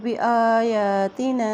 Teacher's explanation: الف کے اوپر کھڑی زبر ہے، یا کے اوپر بھی کھڑی زبر ہے، اس لیے اس کو ایک حرکت لمبا کریں گے۔